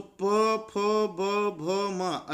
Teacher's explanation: ये सब बोलते समय हमारे दोनों होंठ आपस में छूते हैं